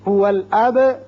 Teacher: هو الاب با ساکن ہے، صفت قلقلہ ادا کریں گے.